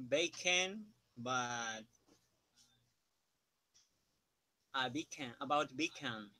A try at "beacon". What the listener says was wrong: Your ON is it's too long, it's too heavy. Beacon, beacon. On. Not on. On, beacon, beacon. Se escribe ON. Se pronuncia como UN. Beacon. Bacon. Hay dos palabras. Beacon es lo que estudiaba hoy en clase. Bacon es algo que se come.